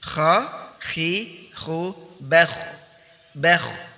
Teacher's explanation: al-hams, yaitu udara atau nafas dialirkan ketika mengucapkan huruf kha. Kemudian juga ar-rakhawah, bunyinya keluar ya. · ar-rakhawah, bunyinya keluar ya. Bunyinya dialirkan, dialirkan